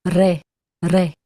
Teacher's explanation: You can also say that as a Spanish R at the front of your tongue